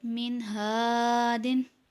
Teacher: الف مدہ ہو رہا ہے اس لیے اس کو ایک الف کے برابر کھینچ کر پڑھیں گے